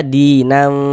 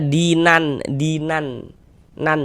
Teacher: Jadi cara membaca ikhfa itu dibaca samar. Jadi bunyi nun sukun atau bunyi tanwinnya itu dibaca samar dengan kita bersiap-siap masuk ke dalam huruf ikhfanya. Ee kemudian disamarkan juga didengungkan. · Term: ikhfa hakiki